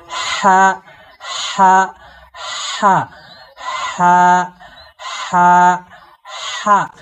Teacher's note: আপনারা এই যে মুখের সামনে হাত দিয়ে প্র্যাকটিস করুন। এই লম্বা হা উচ্চারণে একটা দীর্ঘ শ্বাস বের হবে, একটা বাতাস বের হবে।